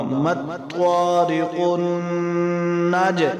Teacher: جیم حروف قلقلہ میں سے ساکن ہے تو اس پر قلقلہ ہوگا